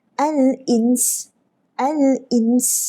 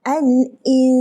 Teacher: Kena dengung dua harakat pada nun baru masuk dalam sin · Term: ikhfa hakiki